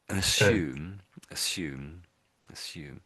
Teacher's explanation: I guess they actually have the emphasis on the U. · They have the schwa at the beginning here